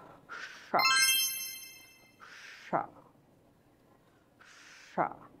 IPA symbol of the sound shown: ʃ